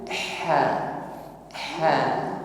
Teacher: ha yang makhrajnya keluar dari wasatul halqi tenggorokan bagian tengah